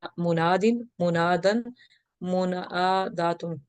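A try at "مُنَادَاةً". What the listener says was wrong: منادتن, دیکھیں اسی طرح سے منادتن, گولتا والا کمزور تھا نا, منادتن.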